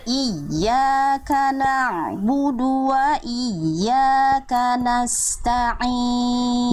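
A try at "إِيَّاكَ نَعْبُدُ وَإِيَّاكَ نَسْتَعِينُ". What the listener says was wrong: Bagus, Masya Allah. Lanjut Bunda.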